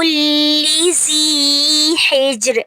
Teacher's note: ہجر پہ جیم پہ کلکلا ہوگا اور را کو ساکن کر دیں گے وقف کی صورت میں